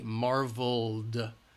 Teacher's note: marvel, it's voiced, the L sound, so we use a D